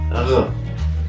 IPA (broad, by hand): ʁ